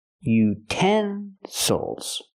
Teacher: Now we have a word with 3 syllables. We stress the second syllable.